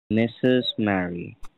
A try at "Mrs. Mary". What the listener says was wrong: Not Mistress Mary, Mrs. Mary.